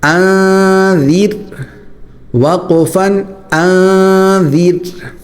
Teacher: اب یہاں پر ذال جو ہے وہ نکالنے کا طریقہ یہ ہے کہ ذال میں زبان کی نوک جو ہے وہ دانتوں کے درمیان بلکہ اوپر والے اگلے دانتوں کو ہلکا سا لگا کر نرمی سے نکالنی ہے · یہاں پر را باریک ہوگا کیونکہ اس سے پہلے زیر ہے